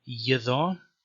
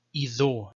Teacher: So the schwa was deleted, which only leaves the consonant y at the beginning, and this became a plain vowel e in Syriac.